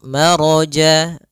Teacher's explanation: ro-nya tebal disebabkan dia ro yang berharakat fathah